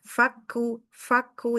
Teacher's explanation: kaf dia huruf syiddah tetapi dia hames. Ya, biasanya huruf syidah itu sifatnya jahr.